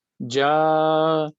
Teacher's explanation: 2 हरकत खींचना है, 2 सेकंड के लिए खींचना है उसको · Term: मद